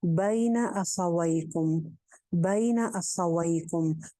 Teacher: बैना, यालीन है, गई के वजन पे बई, नून की जबर को लंबा नहीं करना